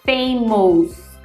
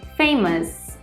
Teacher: palavras terminadas com o u s não podem soar como os e sim como US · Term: US sound, OUS sound